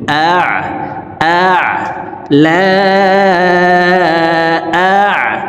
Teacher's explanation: লা হামজা আইন জবর আ। আইন হরফকে হলকের মধ্যখান থেকে উচ্চারণ করতে হবে, কারণ আইনের মাখরাজ হলকের মধ্যখান থেকে হবে।